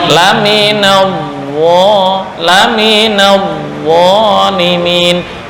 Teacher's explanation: Huruf yang selamanya tafkhim itu adalah huruf dha, nggak mengenal tarkib.